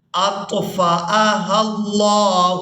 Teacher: كلما أوقدوا نارا للحرب أطفأها الله، یہاں پر حمزہ ہے تو حمزہ کو بغیر جھٹکے کے اور بغیر کھینچے ادا کریں گے،